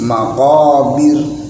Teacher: Pada al maqabir dibaca tipis, harus meringis.